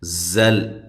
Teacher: ساکن کا یہاں اخفا ہے، مع الغنہ باریک اخفا ہے، زل زا کو خوب زور سے ادا کریں سیٹی کے ساتھ